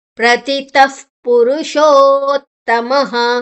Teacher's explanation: ಪುರುಷೋತ್ತಮ, ಮಾದ ನಂತರ ವಿಸರ್ಗದ ಉಚ್ಚಾರಣೆ ಹ